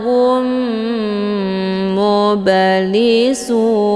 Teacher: cara bacanya mim sukunnya dimasukkan ataupun dileburkan ke dalam huruf mim yang bertasdid dengan cara ditekan kemudian ditahan lebih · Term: Idgham Mimi